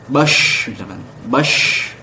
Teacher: menyebarnya udara dalam mulut ketika diucapkan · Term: at-tafasyi